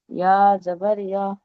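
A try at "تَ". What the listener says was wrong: ইয়া নয়, তা দিয়ে শুরু, ইয়া বলছেন লাস্ট যেটা মার্ক করা আছে, 4 নম্বর পড়াটি।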